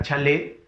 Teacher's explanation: La fuerza de voz en la le. Alalao, fuerza de voz en la última sílaba.